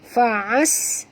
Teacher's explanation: Ini jangan baca rafa tapi baca ra tebal ya. Ra bila di baris atas kena tebal ra ya. Fa'as ya. Alif lam di sini alif lam syamsiah, masukkan bunyi ain terus ke dalam sin disertai dengan jud kerana atas sin ada tasydid ya.